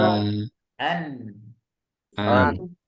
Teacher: makhraj nun itu juga ada bagian khaisumnya, bagian hidung. Jadi ada aliran sedikit. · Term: gunahnya sedikit